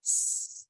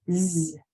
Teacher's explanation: it can say s it's voiceless sound only air or it can say Z it's voiced sound